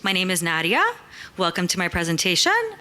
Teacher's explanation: we as women also tend to do this kind of uptalk